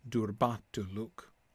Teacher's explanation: It sounds like the Black speech tends towards an iambic rhythm. Unstressed, stressed, unstressed, stressed.